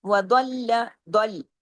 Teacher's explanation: ضاد ہیوی، لام باریک ڈبل، اس لیے کہ لام پہ تشدید ہے